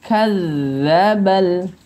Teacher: D yang ditasydidkan jadi getarannya harus tertekan sedikit